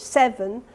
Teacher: And then I've highlighted 7 because it's a classic strong, weak pattern that you find in English, 7, and you can see that there's a much stronger amplitude cue for the first syllable